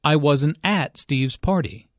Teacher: Notice that the emphasis here is on at. Although prepositions normally have weak stress, in this case, at means there.